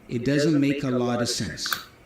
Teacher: The t for lot is a flap t which then joins with the preposition of. But again the preposition of is reduced to anotherwah sound.